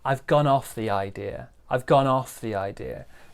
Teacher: So small stress on gone, big stress on off.